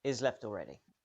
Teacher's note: the word he is shortened or removed so the sentence starts with a very short eye vowel linking